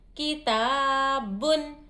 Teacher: الف مدہ کو ایک الف کی مقدار کھینچیں گے